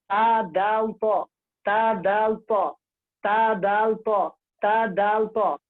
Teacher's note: जुबान की नोक और सनाया उलिया की जड़